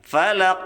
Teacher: Falaq kita pantulkan dengan kuat karena ini ada huruf qalqalah ya, ada sifat qalqalah. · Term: qalqalah kubro